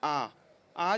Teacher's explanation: तो देखिए पश्च किसे कह रहे हैं, जिन स्वरों के उच्चारण में जीभ का पश्च भाग यानी कि पीछे वाला जो भाग है ना, वो काम करे उसे हम क्या कहेंगे, पश्च स्वर कहते हैं। जैसे कि आ जब हम बोलते हैं तो जीभ का जो पीछे वाला भाग है वो और ऊपर चढ़ने लगता है, जिसकी वजह से क्या होता है, हमारा मुख जो है वह खुलने लगता है ना।